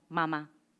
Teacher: esa posición bilabial, la M, se junta con la A, que es la vocal más abierta. Y entonces se despegan los labios, se saca el aire de los pulmones, se pasa por las cuerdas vocales y tenemos ese asombroso ma.